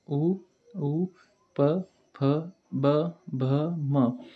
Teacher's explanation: आपण जेव्हा हे शब्द उच्चारतो तेव्हा फक्त ओठांची हालचाल होते, जे एकमेकांना चिटकतात, म्हणून त्यांना औष्ठ्यवर्ण असे म्हणतात.